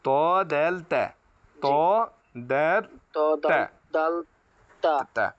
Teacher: জিহবার আগা সামনের উপরে দুই দাঁতের গোড়ার সাথে লাগবে